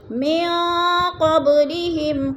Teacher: من قبلہم، نون ساکن کے بعد قوف حروف قلقلہ میں سے آگے ہے، حروف اخفا میں سے آگے ہے تو ادھر اخفا کریں گے، یعنی ناک میں آواز کو چھپا کر پڑھیں گے۔ من قبلہم، قوب پہ قلقلہ ہے، با ساکن حروف قلقلہ میں سے تو با کو ہلا کر پڑھیں گے